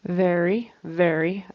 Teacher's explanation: Again, he says a B instead of a V.